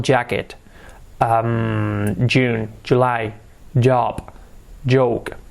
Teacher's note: es like a che española, una che, pero con el sonido, activando las cuerdas vocales